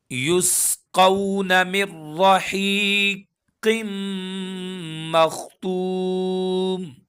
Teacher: یسقون، قون یہاں پر واولین ہے اور قاف حروف مستعلیہ میں سے ہے، یعنی وہ حرف جو ہمیشہ موٹے پڑھے جاتے ہیں۔